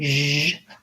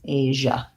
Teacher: it's like the SH sound plus the voice. So if you can say shh and then turn your voice on, zh, then you have what you need for Asia. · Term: zh sound